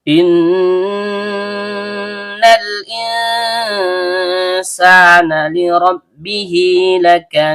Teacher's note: Nun ujung lidah bertemu dengan langit-langit bagian tengah. Karena nunnya bertasydid, maka hukum bacaannya gunah asli. Dibaca dengung. Dan setiap dengung keluar dari hidung. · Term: gunnah asli